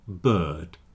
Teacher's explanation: we're putting the r and the vowel together to make one long sound. So in a word like bird for example you say b d not b not bird.